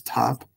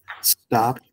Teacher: top is aspirated and the T and stop is not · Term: aspiration